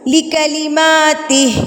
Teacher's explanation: ماں کو میں نے 2 حرکات کے برابر کھینچا ہے کیونکہ اس کے اوپر کھڑی زبر ہے